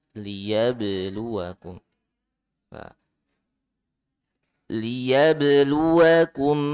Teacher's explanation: ba qalqalah ya dipantul